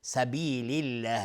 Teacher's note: سبیل الله لفظ جلاله ترقیق هست چون قبلش کسره اومده